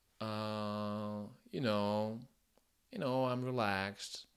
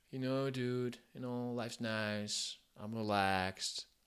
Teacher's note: c'est un accent qui est détendu. La mâchoire souvent est détendue, la mâchoire est ouverte. Ça vient plutôt de l'arrière de la bouche. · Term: General American